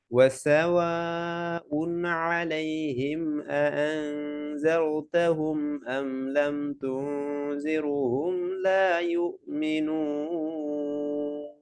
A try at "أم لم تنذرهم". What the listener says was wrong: আচ্ছা, এখানে ভাই তুনজিরু শোনা গেছে, রতে পেশ হয়ে গেছে তুনজিরু, তুনজিরহুম, রতে সুকুন, কাসরা বিফর র সুকুন, র পাতলা, র লাইট, হ্যাঁ।